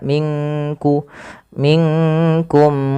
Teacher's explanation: bukan minkum tapi dia samarkan ke huruf Kaf